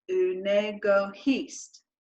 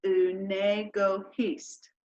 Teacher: We drop that I sound and it turns into unego hist.